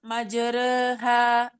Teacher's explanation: maka ro-nya dibaca tipis dengan cara taklil